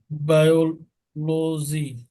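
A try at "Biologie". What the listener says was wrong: দেখেন এখানে আপনি কেন বায়ো বলবেন, এই আয়ের উচ্চারণটা ইয়াতে রয়েছে কি ই, তাই না? তাহলে এটা কি বিওলজি।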